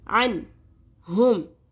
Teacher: نون ساکن کے بعد ہ آ رہا ہے تو ہم اظہار کریں گے، نون کی آواز کو ظاہر کر کے پڑھیں گے